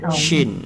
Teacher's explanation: Shin ini tengah langit-langit naik ke atas. Shin. Jadi dia ada angin. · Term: Tafashi